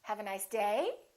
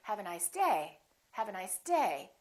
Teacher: I'm still going to emphasize the word day but I'm not going to make my pitch go up